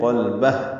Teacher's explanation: ہاں پہ سانس نکال کے پڑھیں گے، سانس جاری رہتی ہے ہاں ساکن پہ